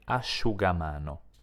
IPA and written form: aʃugamano (asciugamano)